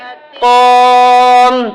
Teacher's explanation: میم مشدد ہوگا تو گنہ ہوگا